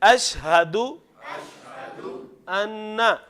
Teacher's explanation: یہ والا ہا کہاں سے ادا ہونا ہے؟ سینے سے